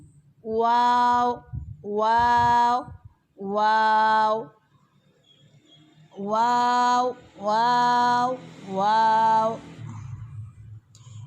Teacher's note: واو دونوں ہونٹوں کے گول نا تمام ملنے سے ادا ہوتی ہے، یعنی دونوں ہونٹ گولائی میں تو آتے ہیں، اتنے گول کہ آپ پینسل رکھ کے اس کو ہونٹوں سے پکڑنے کی کوشش کریں تو اتنی گولائی سے بہت اچھا واو ادا ہوتا ہے۔